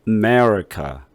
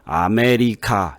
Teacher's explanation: 그리고 끄트머리도 카 이렇게 강조하지 않죠